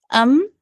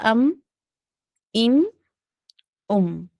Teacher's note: हमारा होंठ मिल गया ना, सूखा हिस्सा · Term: मीम का मखरज